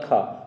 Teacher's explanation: तो खा में ज़्यादा हम हवा दे रहे हैं, उसमें ज़्यादा साउंड देना पड़ा है, ये आता है महाप्राण में